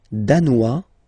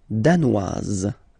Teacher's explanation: Danois, don't pronounce the final S, danoise, here you pronounce it.